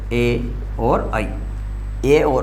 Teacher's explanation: कंठ और तालु दो अलग अलग उच्चारण स्थान मिलेंगे, और फिर इनसे जो उच्चारण होगा वो क्या होगा, ए और ऐ का, ए और ऐ, ए और ऐ। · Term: कंठ तालव्य ध्वनियाँ